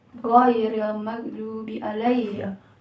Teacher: bertemu antara pangkal lidah dan langit-langit mulut yang berdaging gitu ya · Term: dorsovelar